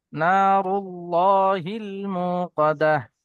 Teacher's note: আল্লাহ শব্দের ডান দিকে পেশ আছে, তাই আল্লাহর লামকে পুর করে পড়তে হয়।